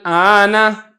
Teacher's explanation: وہ الف ہے، تو آپ نے دوسرے حمزہ کو الف کے ساتھ تبدیل کر دیا۔ پہلا حمزہ تو آپ پڑھ رہے ہیں تحقیق کے ساتھ، دوسرے حمزہ کو آپ الف کے ساتھ پڑھ رہے ہیں، آنا، اس کو ابدال کہا جائے گا۔